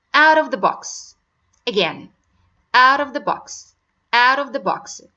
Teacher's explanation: So it seems like R sound, and this is the flapped T.